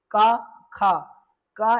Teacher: का एवं खा का जब आप उच्चारण करेंगे तो आप पाएंगे कंठ से आवाज आ रही है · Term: कंठ ध्वनियां